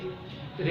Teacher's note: रे को बोलते समय हमारी जीभ क्या होती है, लुढ़क जाती है। ये जीभ कैसे होती है, लुढ़क जाती है, गोल हो जाती है। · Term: लुंडिक व्यंजन